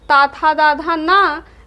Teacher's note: ता था दा धा ना, ला और सा का उच्चारण दंत से होता है